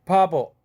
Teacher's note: 바보 할 때 처음에 브는 무성음이지만 버 할 때 브 사운드는 모음과 모음 사이 아와 오라는 모음과 모음 사이에 끼어 있으니까 유성음화돼서 유성동화돼서 유성음이죠. 아주 부드럽죠. 파버 할 때 두 번째 브 사운드는 아주 연하고 부드럽습니다.